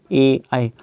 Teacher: कंठ और तालू से ए आई मतलब मुख के ऊपरी भाग से और कंठ से दोनों से उच्चारण हो रहा है